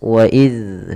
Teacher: tempat keluarnya adalah dari ujung lidah kita menempel dengan gigi seri atas